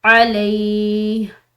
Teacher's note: علیہ عین ہلکے حروف میں سے ہے، لام کے بعد یا ساکن ہے تو ایک الف کی مقدار لمبا پڑا جائے گا